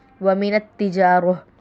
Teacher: وقف کیا ہے، گول تا کو ہا سے بدل دیں گے